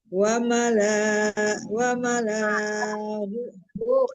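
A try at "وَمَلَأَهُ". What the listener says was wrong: Ibu, lanya nggak panjang.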